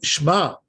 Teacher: they're not pronouncing the E which is under the shin it should be Shema right not Shema that's not good don't